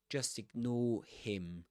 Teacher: he does pronounce the the h at the at the beginning of him. · He doesn't pronounce the r the linking r there.